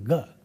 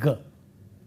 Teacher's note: when we say g, we have vibration, and then it is not aspirated, and the place of articulation is velum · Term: voicing